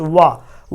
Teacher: वा जो हमारा ये है, वा शब्द जो है यानी वा वर्ण जो हमारा कौन सा, दंतोष्ठ, वाह बोल रहे हैं तो हमारी जीभ दांत प्लस ओठ दोनों के सहारे वाह शब्द निकल रहा, इसलिए दंतोष्ठ कहते हैं